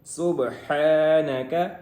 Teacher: قالوا، قاف موٹا ہوگا، سبحانك، سین ہے، اس میں سیٹی کی آواز آئے گی، اور آگے با حروف قلقلہ میں سے ہے، اس کے اوپر ساکن ہے، تو یہاں پہ اس کو قلقلہ کریں گے، ہلا کے پڑھیں گے۔ سبحانک، حا حلق والی حا ہے، اس کو حلق سے نکالیں گے